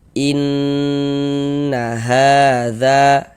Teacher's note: Berarti huruf nun yang bertasydid ini hukumnya ghunah musyaddadah. Karena dia ghunah, maka cara membacanya digunahkan atau didengungkan. Jadi di bagian in suaranya itu kita tahan, kita panjangkan sejenak.